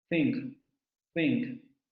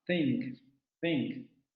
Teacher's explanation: El aire sale por la cavidad oral, pero vean cómo aquí ya la lengua se adelanta para tocar la parte inferior de los dientes superiores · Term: dental fricativo sordo